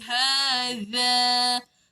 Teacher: Hadha keluar lidah panjangkan 2 harakat sebab ada tiang alif tu.